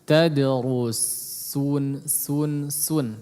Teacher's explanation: Perhatikan juga huruf sin, tadrusun ya, jangan jadi shad. Jangan ditebalkan.